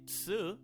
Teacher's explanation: I forgot to mention that they also don't have tu. Instead of saying tu, they say tsu.